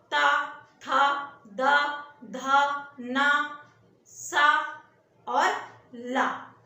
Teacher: दंत में आपका ला आता है और सा आता है दंत ध्वनि में। दंत में क्या है कि जीभ हमारी दांत में लगती है। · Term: दंत ध्वनियां